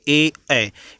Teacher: जैसे ए, इसमें कंठ और तालु दोनों चपक रहे, कंठ से भी आवाज़ आ रही है और तालु भी लग रहा है। ठीक है, जो हमारी जीभ है वो तालु को भी टच कर रही है, इसलिए हम लोग इसको कंठ तालव्य व्यंजन बोलते हैं।